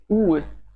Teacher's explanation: The Russian version is more labialized, that is, you round your lips to a major degree. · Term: Russian sound U